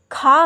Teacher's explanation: खा कंठ महाप्राण अघोष है